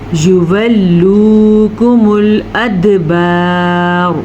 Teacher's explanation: वक्फ किया तो हमने रॉ को पुर पढ़ना है, वक्फ करें या ना करें, दोनों सूरतों में रॉ पुर पढ़ी जाएगी।